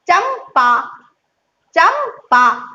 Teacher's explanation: पा बोलने से पहले क्या किया, होठ को बंद किया, तब बोला पा।